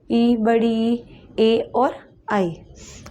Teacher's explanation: जीवा के अग्र भाग से इनका उच्चारण होता है